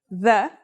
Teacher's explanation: It's pronounced with the tongue between the upper and the lower teeth. It's quite easy to pronounce. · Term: voiced sound